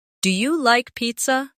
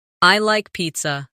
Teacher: Let your voice fall gently at the end. · Make sure your voice rises at the end.